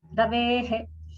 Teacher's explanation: Ravehe is a visarga at the end there.